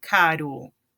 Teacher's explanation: quando o R estiver entre duas vogais, quando ele for intervocálico, vai ter o mesmo som do espanhol